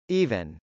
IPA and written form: ˈivɪn (even)